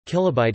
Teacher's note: the prefix carries the stress, while the root drops its stress but retains a full vowel in the syllable that is stressed when the root word stands alone. For example, kilobyte is, with stress on the first syllable.